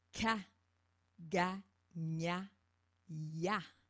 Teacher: c'est le dos de la langue qui frappe à l'arrière du palais